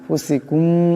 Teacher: পরে ফাসে এখানে ইকফার আকারে পরিমাণ গুণ্য হবে এমন করে ফুসিকুম এখানে মিম সাকিনের পরে মিম আসছে এখানে ইদগাম হয়ে যাবে